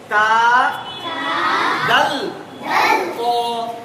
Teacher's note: সবটা কিন্তু তিনটে অক্ষর উপরের দাঁতের গোড়ার সাথে লাগিয়ে উচ্চারিত হচ্ছে